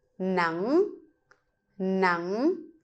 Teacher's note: So you go lower and then pick it up.